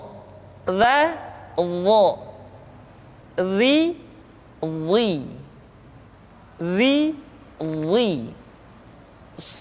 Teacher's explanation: diucapkan dengan menyentuhkan ujung lidah dengan dua gigi seri bagian atas